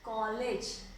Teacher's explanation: आगत ये होते हैं जैसे इसका उच्चारण आपका जैसे हिंदी का आ और ओ, इसके मध्य की आवाज निकलती है